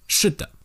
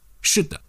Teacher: The neutral tone seems to be shorter.